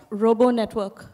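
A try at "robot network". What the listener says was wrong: What? Your T, you're not pronouncing clearly. Okay, it is Robert network, not like Robert network. Okay, it's a robo network.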